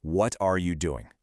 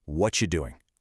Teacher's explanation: that entire what are you cluster just crashes together into a simple punchy what you sound